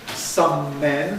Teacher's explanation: Some men that gives you a long M. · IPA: [ˌsʌm ˈmen]